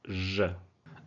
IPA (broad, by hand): ʒ